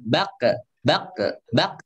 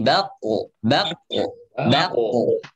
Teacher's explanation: ketika huruf itu berharakat sukun seringkali pantulannya tipis. Nah, ini pantulannya jangan tipis ya. Jangan bak bak bak tapi bako bako bako. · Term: pantulannya juga ikut tebal